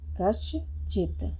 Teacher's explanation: यहाँ पर चा है तो बदल गया हमारा सा, किसमें, दंती सा बदल गया हमारा तालव्य सा में